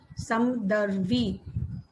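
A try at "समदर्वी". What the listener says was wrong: Not Samdarvi. Samadarvi. Not this is not Hindi. Samadarvi. Samadarvi.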